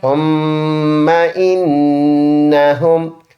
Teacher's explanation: ثم ثامیم پہ ثم، میم زبر ما، ثم غنہ کریں گے، پکا غنہ ایک الف کی مقدار